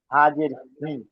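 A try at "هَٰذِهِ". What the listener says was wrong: হা খারাজের, শুধু শুধু জের নয়, খালাজের, খালাজের হলো এই যে চিহ্নটি, এই যে চিহ্নটি, এটা হলো খালাজের, ঠিক আছে। আর শুধু জের হলে কি হবে, এরকম চিহ্ন হবে, এরকম একটা হেলা দাঁড়িয়ে হবে, দাঁড়িয়ে হবে।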